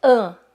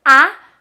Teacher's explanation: você pode usar mais esse A mais nasalado, no caso, com traços de nasalidade, ou você pode fazer A.